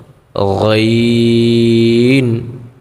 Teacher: গইনের ক্ষেত্রে আমরা গলাটাকে একটু গড়গড় করে উচ্চারণ করব